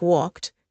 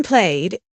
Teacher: There are three sounds T, D, and ID. For verbs like walked, the ending sounds like T. In played, it's D. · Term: ED endings